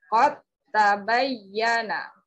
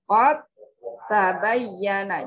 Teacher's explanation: Nah, ini dua huruf yang sama makhraj, tetapi memiliki sifat yang berbeda. Nah, dal, cara bacanya dimasukkan ke huruf ta dan ta-nya ditasydidkan.